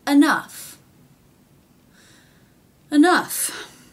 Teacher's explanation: the aw vowel changes to the uh vowel, but somehow that F sound stays in there.